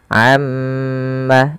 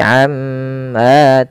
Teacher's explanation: Karena pada lafal tersebut ada yang dinamakan dengan bacaan gunah. itu cara membacanya mnya ditahan